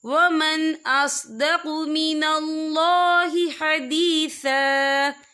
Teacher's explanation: حمزہ جو ہے حروف ہلکی کا ورڈ ہے، ہم یہاں اظہار کریں گے، ہم اسے بنا غنّے کے پڑھیں گے